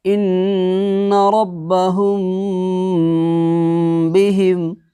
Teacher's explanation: میم ساکن کے بعد اگر با آئے تو گنہ کے ساتھ اخفاء ہوگا، یعنی میم ساکن میں گنہ کریں گے۔ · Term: اخفاء شفوی